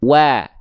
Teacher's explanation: Buka mulut sedikit senyum. Jadi ketika wawunya udah dilafalkan monyong dulu kan, masuk ke vokal A berarti BMSS dia, buka mulut sedikit senyum.